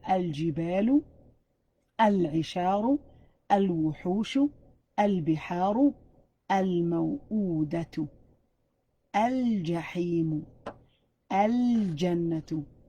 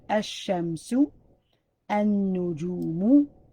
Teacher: Took out the L sound and emphasized the letter that's after it.